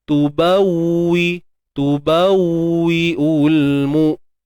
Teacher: Nak dapatkan kesempurnaan sebutan waw tu, jelas waw tu dengan memunculkan bibir.